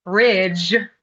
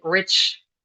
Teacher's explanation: instead of saying ridge with the voiced consonant cluster, German speaker and Russian speakers tend to say rich.